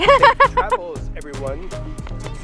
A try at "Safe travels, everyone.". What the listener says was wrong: You gotta say it cuter and peppier. Safe travels, everyone.